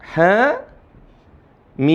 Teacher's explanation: Jadi cara bacanya dibaca 2 harokat.